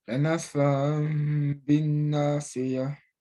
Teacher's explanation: tu touches les lèvres seulement quand tu commences à prononcer le ba après avoir terminé le nasillement pour deux unités de temps